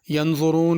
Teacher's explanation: ینظرون کے را کو پر کر کے پڑھنا، باریک ینظرون نہیں پڑھنا۔